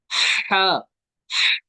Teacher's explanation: ये अदा होता है हलक के नीचे वाले हिस्से से, बॉटम ऑफ द थ्रोट